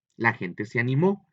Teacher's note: Ahora es en el mo donde lleva la carga de la fuerza, la sílaba, y por eso es donde lleva el acento.